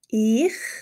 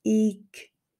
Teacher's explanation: In Zürichdeutsch sagen wir ich, ein raues ch, während wir in Bern sagen ich, ein sanftes g.